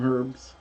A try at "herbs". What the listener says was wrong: Herbs. H is silent.